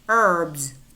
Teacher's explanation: Notice how the H is not pronounced in this word.